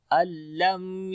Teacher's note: नून साकिन के बाद लाम आ गया, इदगाम बगैर गुन्ने के करेंगे